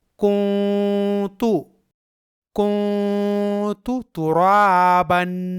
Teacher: یہاں کنتو کے نون ساکن کا اخفا ہوگا